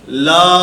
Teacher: لام کی ادائیگی میں آواز ناک میں نہ جائے